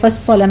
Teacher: صاد مشدد ہے، سختی سے ادا کرتے ہوئے آپ نے پر پڑھنا ہے